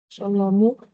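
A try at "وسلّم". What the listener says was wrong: Wa salla. Ini lamnya ditasdid ya. Tadi dibaca salamu. Kalau nggak salama, salamu, salami.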